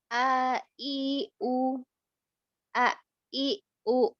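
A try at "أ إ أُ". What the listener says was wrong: Vokalnya masih belum jelas, masih O, A, I, U, dan seterusnya. Ulang.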